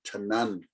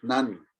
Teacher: you just go straight in without that vowel in between. You just go straight into that sound, tnan. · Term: one syllable word